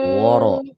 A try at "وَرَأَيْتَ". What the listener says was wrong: awas, wawunya tebal, wawunya harus tipis. Waro, bukan woro.